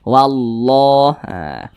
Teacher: Syamsiyah karena huruf lamnya dibaca idgham ini enggak ada tanda bacanya huruf lamnya di sini langsung masuk ke huruf lam yang di depannya ini ya seperti itu wallah haah kemudian lafaz Allah dibaca panjang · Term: Idgham Syamsiyah